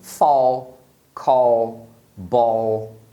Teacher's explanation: no caso da palavra terminar em L, você vai pronunciar o A como O. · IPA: /ɔl/